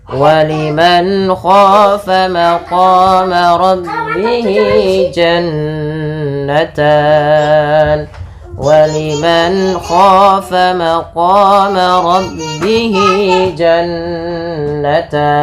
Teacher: Pada lafal waliman khafa ada nun sukun bertemu dengan huruf kha, maka ini ada hukum tajwid berupa bacaan izhar halqi, yaitu suara nunnya harus diperjelas dan dijelaskan suara nunnya waliman dan tidak boleh ditahan